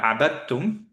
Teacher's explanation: আমরা দালটাকে কমপ্লিটলি বাদই দিয়ে দিলাম কারণ দাল এবং তায়ের মখরাজ ইজ দ্য সেম